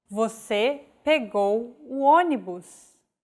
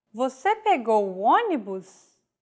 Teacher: With a question mark at the end and a raised intonation.